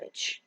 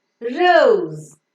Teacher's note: the tip of the tongue is slightly rounded and it goes very very close to the back of the teeth